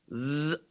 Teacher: it's open, the air flows between the tongue and the teeth.